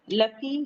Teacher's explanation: لفی یا مدہ ہے، 2 کاؤنٹ پڑھیں گے